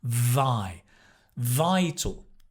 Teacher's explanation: Stress on the “vi”